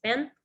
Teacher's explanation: things like final consonant cluster reduction, so band becomes ban